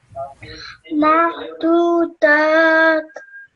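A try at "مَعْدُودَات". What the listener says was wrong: Okay, make sure you say that ayn sound. Ma'dudat. So over here, the alif madda will still be pronounced. So you would stretch that sound for 2 seconds and then you would join it to the ta. Okay, because of the sukoon. Ma'dudat.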